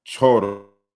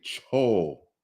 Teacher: the liquid sound has been lost